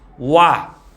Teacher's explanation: 그러면 반모음 오, 그다음에 아가 발음되지. 그러니까 엄밀리 얘기하면 두 개의 의문이다. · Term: 이중모음